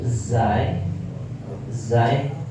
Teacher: Ada makhraj yang masuk kepada ujung lidah menempel ke gusi. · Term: huruf zai